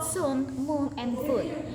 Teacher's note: The tongue is positioned high and towards the back of the mouth. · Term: high back vowels